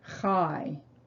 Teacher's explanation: you have the ah vowel followed by a yud which elongates it from ah to i